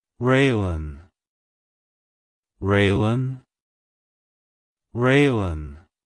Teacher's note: To pronounce it correctly, emphasize the re sound at the beginning, followed by the lynn sound at the end. Keep the emphasis on the first syllable.